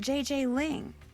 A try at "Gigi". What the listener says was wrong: You mean Gigi Ling? Gigi. En français, you pronounce G like J and J like G. She may very well be JJ in America, but in France, she is Gigi.